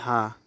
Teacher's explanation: वाला बनेगा क्योंकि ह वाला का वर्ग में आता है और ह वाला आपका जो होता है वो महाप्राण होता है और सघोष भी होता है